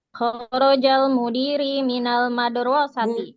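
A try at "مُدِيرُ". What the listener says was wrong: Bukan mudiri. Mudiru. Nah, karena nggak ada huruf apa-apa yang membuat dia kasrah.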